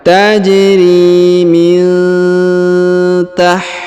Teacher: huruf nun sukun bertemu ta, maka didengungkan dan disamarkan